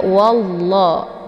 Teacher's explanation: lafzul jalalah ini dibaca tafkhim ya tebal karena sebelum lafaz Allah ini berharakat fathah yaitu wa ya jadi cara bacanya wallah ditebalkan bukan walla ya